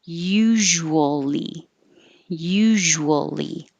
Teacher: keep your lips rounded and then wool more rounded and then lee not rounded